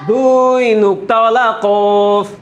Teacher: 4 নম্বর মাখরাজ জিহ্বার গুড়া তার বরাবর উপরে তালুর সঙ্গে লাগায়া 2 নুক্তাওয়ালা কফ